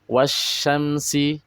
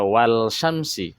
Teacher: Itu huruf lamnya sudah dimasukkan ke huruf shin. Disebut alif lam syamsiyah atau tidak dibaca lagi lamnya di situ.